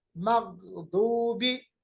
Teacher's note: गैन और दा दोनों मोटा अदा होते हैं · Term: हरूफ मुस्तालिया